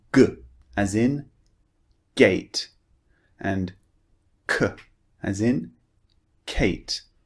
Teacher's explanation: Well, we use the back of our tongue actually way, way back. So, what we do is we push the back of our tongue up. We block the air and then we release. We push the tongue down to produce the sound.